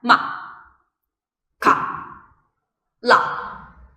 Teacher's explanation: So your intonation should be going down. The tone is very short and very fast, and the emotion that you should be feeling while you're pronouncing the first tone is the emotion of seeing no lights in the future. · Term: falling tone